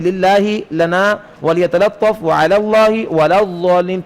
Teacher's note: ان ساروں میں بھی لام کو باریک کریں